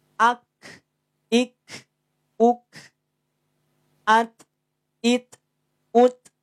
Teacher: hanya sekedar percik napas saja yang keluar